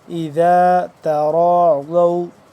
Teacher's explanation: تا باریک، ذال نرمی سے پڑھیں گے، تا باریک کر کے پڑھیں گے، اور را اور ضاد موٹا پر کر کے